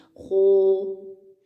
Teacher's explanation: اس کو جب موٹا کرتے ہیں نا تو ہونٹوں کو گول کر لیتے ہیں، ہونٹوں کی گولائی سے سہارا لیتے ہیں موٹا کرنے کے لیے، خو، ہونٹ گول کر لیتے ہیں، جس کی وجہ سے وہ آواز تھوڑی سی موٹی موٹی سنائی دیتی ہے۔